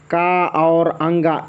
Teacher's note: का और अंगा इन दोनों का आभ्यंतर प्रयत्न स्पृष्ट है